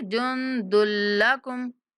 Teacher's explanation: نون پر اخفا کریں گے اور دال کی تنوین کو لام کے ساتھ ملاتے ہوئے بلا غنہ ادغام کریں گے